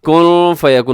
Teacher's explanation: نون ساکن ہے، نون ساکن کے بعد فا ہے تو یہاں اخفا کیجیے گا